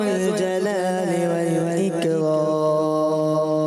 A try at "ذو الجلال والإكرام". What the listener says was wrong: ذال کی ادائیگی دوبارہ کلیئر کریں.